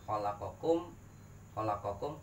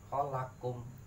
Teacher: Atau idgham mutaqaribain makhrajnya sama hampir sama keluarnya satuin aja khalaqakum khalaqakum qafnya ilangin masuk ke ka